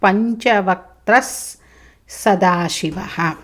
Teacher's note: స వచ్చింది స ముందు విసర్గ సకారం అవుతుంది